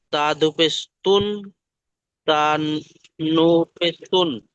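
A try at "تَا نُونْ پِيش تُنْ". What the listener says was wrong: তা নুন পেশ তুন। দেখুন অক্ষরগুলো পুরোপুরি বলতে হবে না। আপনি নু বলে ছেড়ে দিচ্ছেন, কি করে হবে? কেউ দা বলে ছেড়ে দিচ্ছে না। নুন, তা, নুন পেশ তুন।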